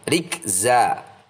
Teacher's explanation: Fathah tanwin kita baca fathah panjang, dan panjangnya dua ketukan saja, jangan terlalu panjang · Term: mad iwad